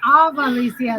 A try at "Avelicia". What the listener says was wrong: You say AVA, Avalicia. That's what most people do, and that's fine. Avelicia. Avelicia.